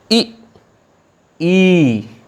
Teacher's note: सबसे पहला आता है संवृत्त स्वर। संवृत्त स्वर वे स्वर जिनके उच्चारण में मुख न के बराबर खुलता है, अर्थात लगभग बंद रहता है।